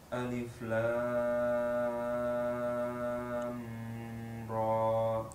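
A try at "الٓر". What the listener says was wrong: Lam di sini dalam kondisi sukun, jadi tidak perlu dilamakan, kelamaan tadi. Lam, segitu saja, tidak perlu lam ra, nggak perlu, karena dia dalam kondisi sukun, tidak tasydid.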